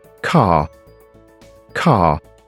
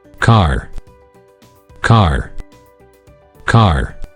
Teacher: North American people, such words as car, they already pronounce with R sound.